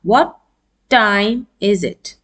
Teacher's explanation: So you can see that the T is pronounced twice, but once the first T is pronounced with sukoon, the second T is pronounced with fatha. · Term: shadda with fatha